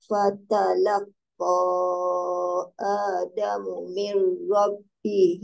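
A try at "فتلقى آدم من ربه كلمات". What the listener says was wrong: Tak ada fa. Rabbihi kalimatin.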